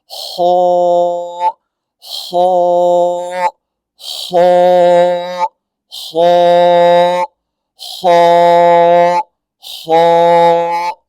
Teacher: تو یہ خا جو ہے یہ اس طرح سے نکلتا ہے جیسے کہ آپ یہ سمجھ لیجئے جو گلے کے منہ کی طرف والا حصہ ہوتا ہے جہاں پہ وہ آپ سمجھتے ہوں گے نا چھوٹا سا وہ کوا جیسے لٹک رہا ہوتا ہے، بلکہ وہاں سے ادا ہوتا ہے